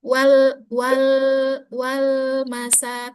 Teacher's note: Lam itu dia makhrajnya tepi lidah